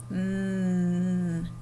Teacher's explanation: you can feel it in your throat. It's vibrating. We call that a voiced letter.